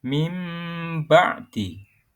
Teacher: nun mati atau tanwin tersebut diubah menjadi suara mim yang samar, disertai dengan dengung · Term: iklab